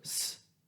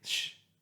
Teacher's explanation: if you say s, sh, you can tell your tongue is just moving it back a little bit